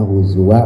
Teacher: za-nya ujung lidah keluarin, tempelin ke gigi atas ya, lidahnya digigit. Huzuan dibacanya huzwa, mad iwat 2 harokat.